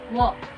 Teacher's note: it is a voiced velar approximant wherein both lips comes not too close from each other. Then the back of our tongue raised at the velum and lips are rounded.